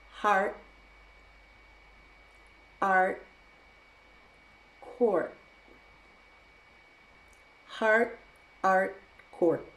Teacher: if the word ends with rt we also use a glottal stop